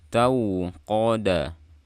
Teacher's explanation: Jadi jangan tahu qada, enggak, atau tahu qada, do, enggak. Qafnya tebal, dalnya tipis.